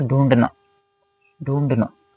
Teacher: थोड़ा सा ढ भी आ रहा है थोड़ा सा और न भी आ रहा है।